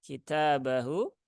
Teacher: Kafnya 1 harokat, taknya 2 harokat ya, mat asli.